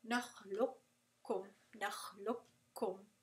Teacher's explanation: You're not going to pronounce the قاف with the قلقلة. You're not really going to pronounce the مخرج of the قاف. You're going to drop it and you're going to do إدغام كامل. · You're not going to pronounce the qaf at all. That is the first case of متقاربان.